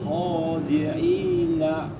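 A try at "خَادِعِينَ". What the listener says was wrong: Ainnya yang jelas. Khadi'ina. Kha. Khadi'ina.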